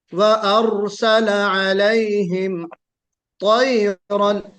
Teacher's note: अलैहिम में गुन्ना नहीं होगा, मीम साकिन के बाद ता हरफ इजहार है। व अरसल अलैहिम, व अरसल अलैहिम तैरन, ता बेशक निकालिए, ता हरफ मुफख्खमा है, हरफ मुफख्खम है, मोटा पढ़ा जाएगा, लेकिन ता को मोटा करते वक्त तोयरन नहीं होना चाहिए।